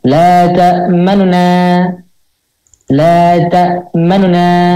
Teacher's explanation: Yang nunya itu setengah harokat. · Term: ar-raum